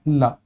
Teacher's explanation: ला के उच्चारण में ऐसा लगता है कि जीभ ना दांतों को छूने पहुंचती है, और दांतों को छूने के चक्कर में मुंह के अंदर जो बनने वाली हवा है ना वो अगल बगल से बाहर आती है, और इसी अगल बगल को संस्कृत में कहा जाता है पार्श्व।